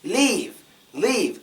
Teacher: when you say leave it kind of gets louder with the word it goes up